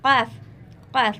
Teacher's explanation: قاف کا مخرج یعنی بڑے قاف کا جو مخرج ہے، زبان کی جڑ جب نرم تالو کو لگے تو قاف ادا ہوتا ہے، قاف قاف، یہ دو نقطے والا قاف یعنی بڑا قاف ادا ہوتا ہے۔